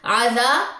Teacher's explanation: عذا الف مد ہے، عذا الف خالی ما قبل زبر 2 کاؤنٹس لمبا کریں، باقی پیش کو لمبا نہیں کرنا